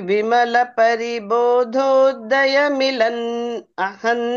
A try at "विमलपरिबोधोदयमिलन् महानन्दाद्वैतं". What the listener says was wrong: ఇక్కడ మిలన్, మిలన్ ఆపకూడదండి. అదేంటది? పరిబోధోదయమిలన్ మహానందాద్వైతం.